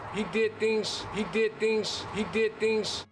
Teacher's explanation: voicing we use the voiceless equivalent which is an S so the Z Sounds at the end of words turn into more of an S sound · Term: devoicing